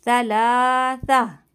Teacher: ٹھیک ہے, یہاں پہ وقف لازم ہے, میم کی آیت ہے تو یہاں پہ ہم لازمی رکیں گے, گول تا کو ہم ہا میں بدل دیں گے